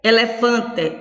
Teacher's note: Observe, o té, elefante, o té é a última sílaba, fã é a penúltima e o lé é antepenúltima. Mas o fã é a sílaba mais forte, isto é a sílaba tônica.